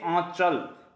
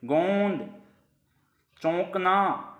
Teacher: जब हम बोलेंगे तो आवाज मुंह से भी आएगी और नाक से भी आएगी। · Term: अनुनासिक स्वर